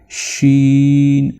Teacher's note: शीन की आवाज जुबान के दरमियानी हिस्से को तालू से लगाने से पैदा होगी। · شین کی آواز زبان کے درمیانی حصے کو تالوں سے لگانے سے پیدا ہوگی